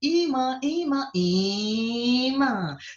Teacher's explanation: Você está observando que esse i, ele está mais esticado, tá? Onde você estica mais a vogal, ali está a sílaba tônica.